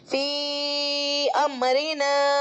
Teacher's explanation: یا مدہ کے بعد حمزہ دوسرے کلمے میں آ رہا ہے تو بڑا والا مد مد منفصل ہوگا اور 2 سے لے کر 5 الف کے برابر تک کھینچا جا سکتا ہے